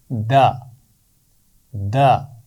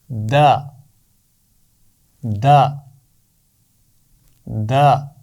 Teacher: زبان کی نوک اور اوپر والے دانتوں کے پیچھے لگا کر دال کی آواز ادا ہوتی ہے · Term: دال کا مخرج